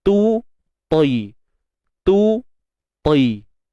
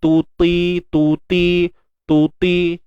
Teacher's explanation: Ta dengan ta sifatnya berbeza walaupun makhraj sama. Sebab tu kita dengar satu nipis satu tebal, sebab beza pada sifat.